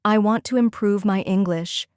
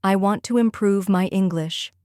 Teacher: Notice the stress on want, prove, and English.